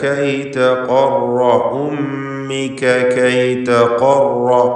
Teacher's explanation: ഖാഫിനും റായിനും തഫ്ഖീമാണ്. ഖാഫ് ഇസ്തിഅലാന്റെ ഹർഫാണ്, റാ തഫ്ഖീം ചെയ്യേണ്ട അക്ഷര അവസ്ഥയിലാണ്.